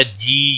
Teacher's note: یا مدہ ہے، ایک الف کے برابر کھینچ کر پڑھیں گے